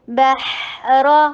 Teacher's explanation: با کے اوپر فتحہ کو یہ جبڑا کو کھولیے اور ہا کے اوپر رخاوا کیجیے